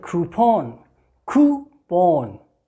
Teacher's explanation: Coup, long vowel sound, oo, and then pon.